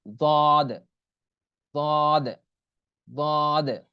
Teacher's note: জিহ্বার গোড়ার কিনারা উপরের মাড়ির দাঁতের গোড়ার সঙ্গে লাগাইয়া।